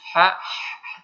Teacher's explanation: Jadi sedikit berdesis ha, tipis ya, lembut